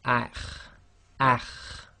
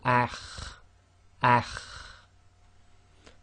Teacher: The next one is the letter kha, and it's one of the tafkhim letters, and you've got that slight grinding in the throat. So this will be pronounced as akh, akh.